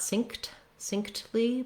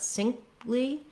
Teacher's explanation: So I'm gonna not burst out that T, not succinctly, but succinctly, where it almost kind of drops off.